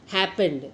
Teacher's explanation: Happen plus ED, happened. Accent falls on hap, not ED.